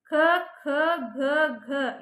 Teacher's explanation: ಇವು ಕಂಠದಿಂದ ಹುಟ್ಟೋದ್ರಿಂದ ಕಂಠ ಅಕ್ಷರಗಳು